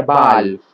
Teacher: Americans use vowel number 5, right? A simple ah sound.